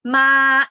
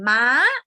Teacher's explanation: this one is flat and this one is high so ma is to come and Ma is a horse